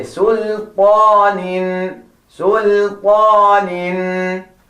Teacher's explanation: Do not make the mistake of saying sul. The la, make it nice and flat. Say sultanin.